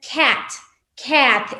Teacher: la letra A, como una vocal corta, tiene un sonido entre la A y la E